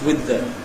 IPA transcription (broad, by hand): wɪð ðə